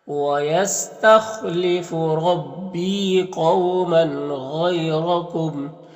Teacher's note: یہاں پر یا لین سے نرم آواز کے ساتھ جلد پڑھیں گے۔ یہاں پر دو زبر ہے، وقف کریں گے تو ایک زبر کے ساتھ الف پڑھیں گے